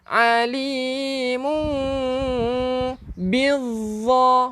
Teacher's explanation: Pastikan dengung, sebab mim togel ni ataupun mim kecil ni bertemu dengan ba, hukumnya iqlab